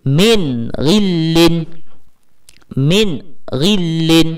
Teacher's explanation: Saya tak jelaskan sebutan nun. Sepatutnya kita kena baca jelas tanpa dengung. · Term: izhar halqi